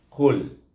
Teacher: Qaf baris hadapan dimatikan dengan lam, bunyinya dengan jelas, iaitu dengan izhar tanda mati di sini, qul. Daripada makhraj qaf pergi kepada makhraj lam matinya.